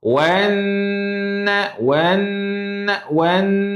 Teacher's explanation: Dengung tu kat khaisyum. Khaisyum tu kat hidung rasa.